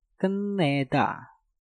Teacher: Ket diakhiri dengan tiut, setelah itu diikuti kata yang diawali dengan nieun. Nah, maka tiutnya kalian rubah menjadi nieun.